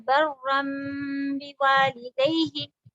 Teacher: मीम और बा दोनों हुरूफ शफवी हैं, यानी कि होठ वाले हुरूफ हैं, इसलिए हमको ज्यादा इसको इख्फा का काम इतना नहीं करना पड़ता।